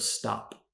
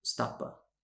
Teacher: Spanish speakers often add a vowel to the end of these words in English